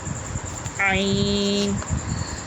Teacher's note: حلق کے بیچ سے ادا ہوتا ہے، یہاں سے ح اور عین ادا ہوتا ہے۔